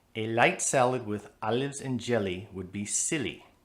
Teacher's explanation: All those light L's give that sentence a foreign sound.